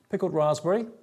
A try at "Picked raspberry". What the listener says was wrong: Picked raspberry. Not pickled.